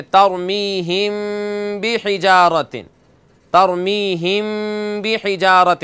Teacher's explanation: میم ساکن کے بعد جب با آئے تو وہاں غنہ ہوتا ہے، وہاں غنہ کر کے پڑھتے ہیں